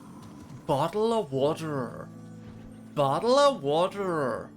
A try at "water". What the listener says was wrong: Yeah, it's like I can hear the way you're pronouncing the T too. It's like there's a bit too much stress on it. It's like water. Water. He sounds very like water.